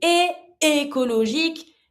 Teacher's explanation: because I have two vowel sounds, I need to stop my sound to repronounce the second one. Otherwise, I cannot make it.